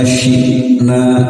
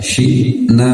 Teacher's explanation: hamzah sukun, baru dia harus diputus suaranya ya, tekan saja syi'na.